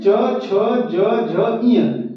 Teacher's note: ये कहां से बोला जाएगा तालू से बोला जाएगा यानी तालब व्यंजन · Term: तालव्य व्यंजन